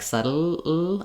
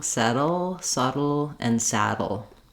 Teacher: sound more like subtle I don't want that whole tongue lifting I want to make sure I have that lateral air um coming off the sides of the tongue